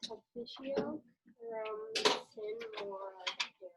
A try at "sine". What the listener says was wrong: Yeah, so it's actually Cine. But anyway, good pronunciation. Remember, there's no like silent syllables in Latin. Every syllable and letter basically we have to pronounce. You know, in English, there is a word called sine, like a sine wave in English.